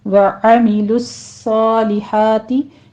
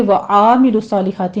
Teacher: आइन की आवाज़ छोटी कीजिए, वस्ते हलक से निकालनी है।